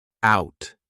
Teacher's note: Notice how we can combine out tonight together. When I say out, I'm not going to pronounce that T. Out. The T is just silent.